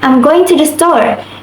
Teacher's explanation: Intonation falls at the end.